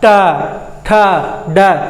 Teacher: ट, ठ, ड, तो उससे ऊपर जैसे दांत से मसूड़े उससे थोड़ा सा ऊपर जब हमारा जीभ स्पर्श कर रहा है उस स्थान को हम लोग बोलते हैं मूर्धा